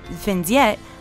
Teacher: creates a Z sound between the words